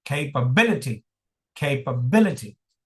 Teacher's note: So there is another stress syllable here. Secondary stress is on K.